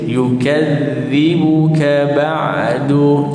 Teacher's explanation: Yukadzibu, yu baris depan, kaf baris atas, nipis, masuk ke dalam dal. Yukadzibu, jangan terbaca fama yukazzibu, salah. Sebab apa? Dibaca dengan zai. So baca dengan zal, nipis.